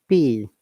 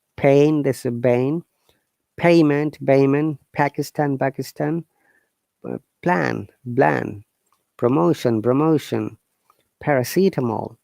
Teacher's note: the p phoneme is made through the mouth and it is unvoiced which means that you don't use your vocal chords to make the sound